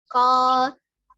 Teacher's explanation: pangkal lidah ya, bukan ujung lidah, bertemu dengan langit-langit atas. Jadi pangkal lidah, nah ini yang bertemu dengan langit-langit atas. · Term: qaf